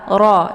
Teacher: Bi dibaca pendek ro dibaca tebal ya karena harokatnya fathah roh dengan posisi ujung lidah terangkat ke langit